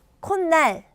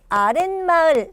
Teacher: 뒷말의 첫 소리 니은 미음 앞에서 니은 소리가 덧나는 것. 자, 원래 코 플러스 날이에요.